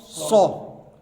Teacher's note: صو ثا کا ساؤنڈ ثا، سین کا ساؤنڈ سا، صاد کا ساؤنڈ صو. حرف بھاری بھی ہے اور سیٹی والا بھی ہے